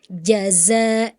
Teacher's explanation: jim dari tengah lidah, zai dari ujung ke gigi yang bawah